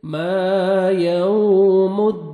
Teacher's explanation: अदराक मा यौमुद्दीन अलिफ मद्दा मीम को 1 सेकंड खींचेंगे। वाव लीन है, लिप्स को राउंड में लेके जाएंगे अच्छी तरह ताकि वाव अदा हो, नरमी से अदा करेंगे और या मद्दा 1 सेकंड दाल को खींचेंगे, लास्ट में नून साकिन हो जाएगा जब स्टॉप करेंगे।